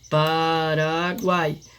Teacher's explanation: Então é três vogais, encontro de três vogais numa só sílaba. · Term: Tritongo